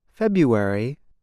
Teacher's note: the R is not pronounced